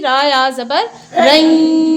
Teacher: اگر ایک زبر ہوتا تو ہم اس کو پڑھتے را یا زبر رئی، ناک میں آواز نہ جانے دیتے، لیکن دو زبر کی وجہ سے ناک میں آواز جائے گی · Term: ادغام مع الغنہ